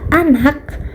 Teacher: Selanjutnya contoh yang kedua pada akhir kata pada kata anak bunyi ka sering tidak dilepas sepenuhnya atau terdengar setengah